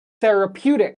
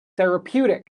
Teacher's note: the stress is on the pew